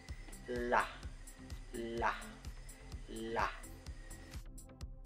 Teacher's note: ang titik L naman ay nasa paraang pagilid na may tinig